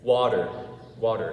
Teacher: when you're speaking fast and the words come together, it's easier to make the t become like a d, right?